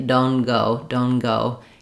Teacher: You can hear how if I say that, it would sound like my n was long and going right into my G